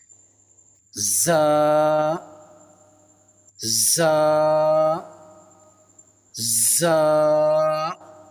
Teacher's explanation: دونوں دانتوں کو آپس میں ملا کر تیزی کے ساتھ جو آواز باہر نکالیں گے اس سے زا اور سین یعنی سیٹی کی آواز کی طرح یہ دونوں ادا ہوتے ہیں